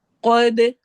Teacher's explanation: قاف کو موٹا کرنا ہے، دال پہ قلقلہ